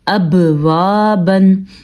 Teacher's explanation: حمزہ زبر با اب، واو زبر الف و، اب و، با 2 زبر بن، ابوابن. آپ نے دیکھا ہوگا کہ ہم نے با کے اوپر قلقلہ ادا کیا ہے. یہاں پہ اگر ہم اس کو ابوابن پڑھتے تو ٹھیک نہ ہوتا, ہم نے پڑھنا ہے ابوابن.